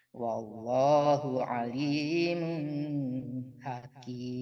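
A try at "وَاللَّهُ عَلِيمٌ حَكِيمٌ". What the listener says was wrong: Wallahu alimun hakim. Nggak boleh tertahan. Nun mati dan tanwin ketemu ha, mau ha besar, mau ha kecil. Jangan tertahan lama-lama, soalnya nggak dengung Mandeh. Iya, izhar tidak dengung.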